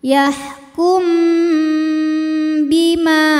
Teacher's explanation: Kemudian ada hukum ikhfa syafawi sebab mim sukun menghadapi huruf ba, maka mim dibaca dengung, tahan.